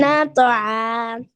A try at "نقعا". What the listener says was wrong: قاف نقعا.